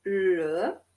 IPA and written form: lə (le)